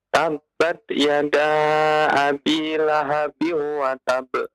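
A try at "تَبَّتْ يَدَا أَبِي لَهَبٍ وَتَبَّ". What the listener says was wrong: Lahabiu idgham bi gunnah. Wa tab. Ada tasydid di sana. Tabbat yada abi lahabin wa tab.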